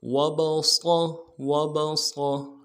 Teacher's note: صاد کی سیٹی کو موٹا ہوگا، موٹا ادا کریں گے،